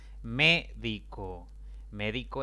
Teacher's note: médico es una palabra de tres sílabas la mayor intensidad cae en la antepenúltima si la va contando de izquierda a derecha por lo tanto